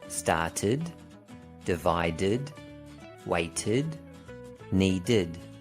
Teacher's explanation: Notice that the sound of id is always produced as a new syllable. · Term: id sound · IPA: /id/